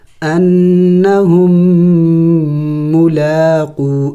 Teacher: میم اور میم کا آپس میں ادغام ہو چکا ہے، اس کو نہیں پڑھا جاتا بلکہ ہا کو اس میم کے ساتھ ملائیں گے۔